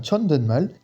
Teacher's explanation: le siot à la fin du T, je le prononce bien comme un N, tout simplement parce qu'après, il y a un son M. Donc on fait la nasalisation.